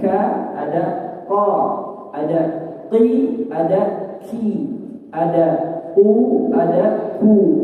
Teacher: Bagian paling belakangnya yang bertemu dengan langit-langit lunak ya atau anak tekak ya adalah tempat keluarnya huruf qof